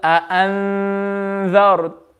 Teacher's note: And all the other letters apart from huruf halqi, apart from yarmaloon, and apart from ba, when they come after noon sakin, then you're going to read it with ghunna, and you're going to read the noon very faintly.